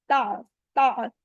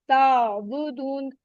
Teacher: आइन की मखरज का हमने ध्यान रखना है, middle part of द throat से अदा करेंगे, और इस पे झटका नहीं आना चाहिए। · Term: आइन की आवाज